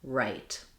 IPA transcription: raɪt